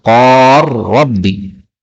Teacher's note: Kemudian ayat keempat qala rabbi, lam ketemu ra boleh idgham menjadi qar rabbi